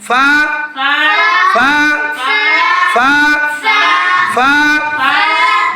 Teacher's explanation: নিচের ঠোঁটের পাট সামনের উপরের দুই দাঁতের আগার সঙ্গে লাগিয়ে ফা হরফটি উচ্চারিত হয়। ফায়ের উপর এক নক্তা ফা আর ফা হরফটি পড়ার সময় একেবারে নরম করে পড়বা।